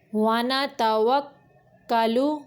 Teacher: کاف کے اوپر یہ شد ہے اس لیے تھوڑی دیر رکیں گے تاکہ 2 کاف کی ادائیگی ہو جائے